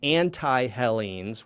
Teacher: where the T becomes a th because of the initial aspiration on the epsilon